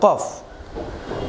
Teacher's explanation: জিহ্বার গুড়া তালুর সাথে লাগিয়ে উচ্চারিত হয় কফ।